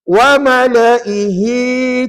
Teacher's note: Bila sambung, wa mala'i tetap pendek. Wa mala'i tetap pendek kecuali hi di hujung tadi panjang.